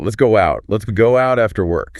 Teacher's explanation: we physically insert a very subtle W sound or a Y sound to avoid stopping the breath · You literally cannot transition from go to out without making a W unless you stop your breath entirely. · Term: invisible bridge